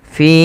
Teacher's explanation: Panjangkan dua harakat pada lafal fin-nya karena ia ada kasrah bertemu dengan ya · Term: mad thabi'i